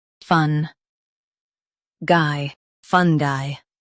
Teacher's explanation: Emphasize fun and soften guy.